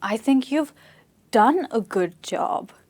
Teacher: Here, you're a bit surprised. This is rising intonation because you're going from low to high because the stress is on this word.